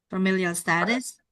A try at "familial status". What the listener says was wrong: Familial, not familiar. Familial.